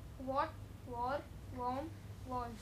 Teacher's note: So, all in all these words, you pronounce A as O.